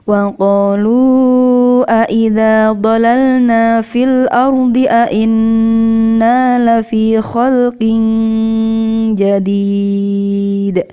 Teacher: Huruf dal itu adalah huruf qalqalah yang harus dipantulkan ketika dibaca waqaf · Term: pantulan qalqalah